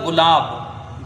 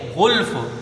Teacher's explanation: لیکن گاف جو ہے وہ باریک پڑھا جائے گا، اور غین جو ہے یہ پر حرف ہے